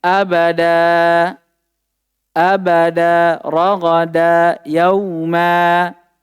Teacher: kalau fathain tadi tanwin dihilangkan secara lafaz bukan tulisan dan digantikan dengan alif. Makanya cara bacanya nanti dipanjangkan ya kan.